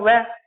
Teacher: वकारस्य का अर्थ होता है वह व्यंजन, वकार का यानी वह का, दंत ओष्ठम दंत और ओष्ठ होता है, दांतों से और ओठों से बोला जाता है। तो इसका एक ही वर्ण हो गया वह।